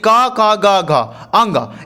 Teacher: आ और क से अंग तक, यानी क ख ग घ अंग, इन सारे अक्षर को हम कंठ से बोलते हैं